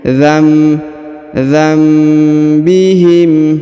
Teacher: dengan ba maka ditahan dua harakat ya rabbuhum bidzambbiihim rabbuhum bidam nun sukun bertemu ba maka didengungkan dan ditahan dua harakat Nun sukunnya berubah menjadi mim